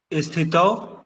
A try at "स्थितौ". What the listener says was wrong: अरे ई नहीं आएगा जी। स्थितौ।